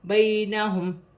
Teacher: یا ساکن سے پہلے زبر ہے یا لین بنے گی، اسے کھینچا نہیں جائے گا